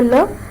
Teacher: articulation is alveolum it's an alveolar sound why is that because the tip of the tongue comes into contact with the alveolar ridge and thereby there is closure